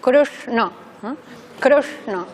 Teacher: Por tanto, la lengua en este caso se acerca al paladar como si apuntara al cerebro. En el caso de la N, como es oclusiva, tendremos contacto. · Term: nasal cerebral